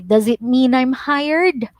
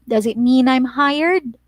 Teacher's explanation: so your voice or your tone goes up